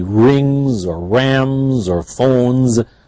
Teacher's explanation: N, M, N are the nasal sounds, and they are always voiced.